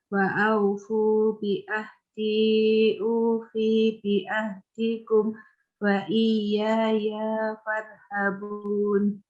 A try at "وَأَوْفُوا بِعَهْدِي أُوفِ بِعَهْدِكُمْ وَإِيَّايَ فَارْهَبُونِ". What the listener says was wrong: Nah, perhatikan yang tidak panjang jangan dipanjang. V-nya pendek. Ufi bi ahdikum, bukan ufi bi ahdikum. Kemudian wa iyaya ya pendek. Bukan wa iyaya farhabun. Wa iyaya farhabun.